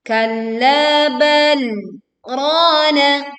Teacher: kita harus membacanya dengan berhenti sejenak tanpa bernafas sebanyak 1 alif atau 2 harokat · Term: tanda saktah